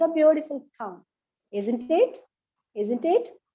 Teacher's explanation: the question tag should be pronounced in a rising intonation